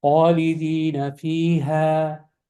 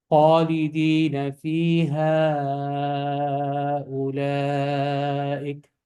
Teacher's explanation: you won't say the mud if you're stopping, but you will say the mud if you're continuing.